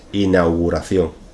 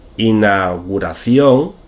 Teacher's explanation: En este caso lo que hacemos en muchas ocasiones es simplificar el diptongo au y dejarlo simplemente en a